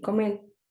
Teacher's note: la lateralización de la r al final de la sílaba